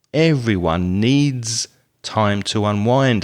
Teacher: notice i stress the s there on needs